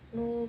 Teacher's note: Bacaan mad tabi'i sebab dhammah bertemu wawu sukun, panjangnya 1 alif atau 2 harokat.